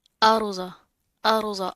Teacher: را پر ساکین ہے اور را کے ماقبل کیا ہے، زبر ہے، تو را موٹی پڑی جائے گی، پر کر کے منہ بھر کر پڑھیں گے